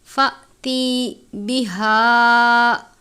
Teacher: حمزہ کے اوپر جزم کی علامت ہے، جھٹکا دے کر پڑھیں گے